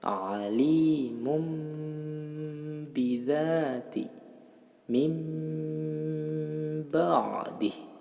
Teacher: merubah bunyi nun atau tanwin dengan bunyi mim yang disamarkan disertai dengan suara mendengung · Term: iqlab